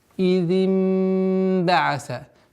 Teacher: И с огласовки кесара мы уходим на назализацию в размере двух огласовок. Идим ба'са со смыканием губ.